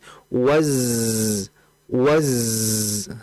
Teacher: Sifat huruf za itu kan di antaranya adalah mengalir dan juga dia saofir. Sifatnya shofir itu berarti kalau kita ee bahasakan itu sama kurang lebih seperti hames.